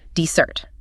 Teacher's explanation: Here the stress is on the second syllable.